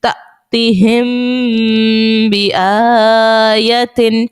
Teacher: تا حمزہ زبر تا، تا زیر تی تأتی ہا میم زیر ہم تأتیہم با زیر بی تأتیہم بی حمزہ کھڑا زبر آ تأتیہم بی آ یا زبر یا تأتیہم بی آیا تا دو زیر تن تأتیہم بی آیتن میم ساکن کے بعد با ہے اخفاء شفوی کا، یہاں پر غنہ بھی کریں گے